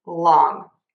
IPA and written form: lɔŋ (long)